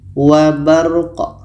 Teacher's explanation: Qa ini mati maka qalqalah, ada pantulan.